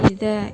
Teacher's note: Idza itu ada bacaan dzal. Di sini ada dzal bertemu dengan alif. Itu dibaca dua ketukan, yaitu disebut dengan bacaan mad tabi'i.